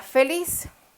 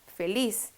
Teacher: cuál es la sílaba tónica feliz es la última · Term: palabra aguda